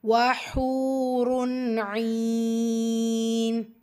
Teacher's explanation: ஹூவில் இருக்கிறது வாவ் மத்தா, 2 ஹரக்கத்தளவு நீட்டம் கொடுத்து ஓதணும். தன்மீனுக்கு அப்புறமா ஐன் வந்திருக்கிறதுனால ஸோ இது இத்ஹார், உள்ளதை உள்ள மாதிரி ஓதணும், குன்னா செய்யக்கூடாது.